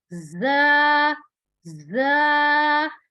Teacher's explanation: ज वर्ड जो है उसमें थोड़ा सा सख्ती से और सीटी की आवाज आनी चाहिए